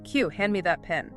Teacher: >> Yes, "could [music] you." In fluid American English, the D and the Y merge together [music] into an entirely new sound.